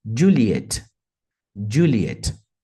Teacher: tem uma ênfase na primeira parte da palavra Juliet e também uma ênfase na segunda parte